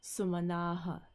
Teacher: That final sa turns into the visarg.